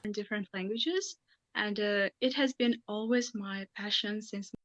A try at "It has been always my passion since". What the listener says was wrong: The pronunciation, it's okay. There's nice intonation in there, but maybe it just slightly lacks a little bit of rhythm, a little bit of stress. Timing is missing there, just a little bit.